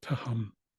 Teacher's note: you could soften it and make it more like just a regular H